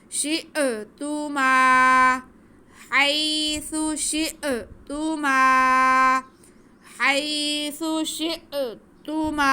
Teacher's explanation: میم کے ساتھ الف ہے تو یہ الف مدہ ہو گیا میم کو ہم کھینچ کے پڑھیں گے